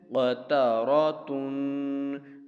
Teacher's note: فعال، قاف زبر قا، تا زبر تا، قتا، را زبر را، قتارا، تا دو پشتن، قطاراتن، ٹھیک ہے، قطاراتن۔ پہلے تین حروف حرکات والے تختی کے ہیں اس لیے نہیں کھینچیں گے اور آخری تا پر ہم غنہ کریں گے